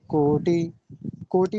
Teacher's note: कोटि में टकार पर ह्रस्व इकार है